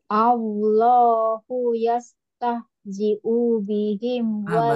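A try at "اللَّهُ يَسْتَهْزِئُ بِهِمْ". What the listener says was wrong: Masih panjang, masih panjang. Yastahzi'u bihim. Coba Allahu yastahzi'u bihim. lagi coba Allahu yastahzi'u bihim.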